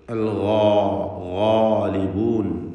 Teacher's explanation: ഗൈനും ദീർഘാക്ഷരമായ അലിഫും ഇവ രണ്ടിനെയും തഫ്ഖീം ചെയ്യുക, തടിപ്പിച്ച് ഉച്ചരിക്കുക.